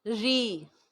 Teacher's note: را کے نیچے جب زیر ہوگی تو اس کو باریک پڑھا جائے گا